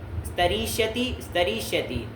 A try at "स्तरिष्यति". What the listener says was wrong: दोनों दीर्घ बोल रहे हो।